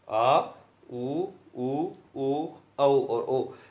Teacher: ऐसे स्वर वर्ण जिनके उच्चारण जिह्वा का पश्य भाग सर्वाधिक सक्रिय रहता है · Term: पश्य स्वर